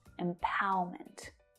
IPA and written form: ɪmˈpaʊə.mənt (empowerment)